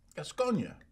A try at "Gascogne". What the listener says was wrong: You don't say the E.